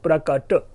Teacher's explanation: र गायब हो गया और बन गया प्रकट